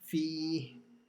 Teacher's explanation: the ya sakin stretches the kasra letter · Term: mad asli